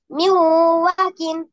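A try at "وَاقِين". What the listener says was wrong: ওয়া। একালিপ টান আছে না? টানেননি কেন?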